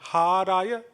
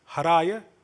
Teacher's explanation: ends on haraya with a long ha and then raya. The second word is haraya with a short ha.